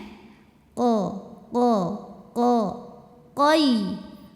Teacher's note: Qayyum Oke qo bukan oo bukan Koo apalagi Bukan tapi Q jadi bibirnya datar saja ya Ee kemudian pangkal lidah naikkan tidak ada anginnya